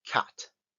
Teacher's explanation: palabra para poderla relacionar esta por ejemplo tenemos la palabra Cat veis que parece una a pegada a una e Pues justo ese es el sonido que hay una mezcla entre una a y una e